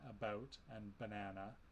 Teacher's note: it's a mid central unrounded vowel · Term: schwa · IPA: ə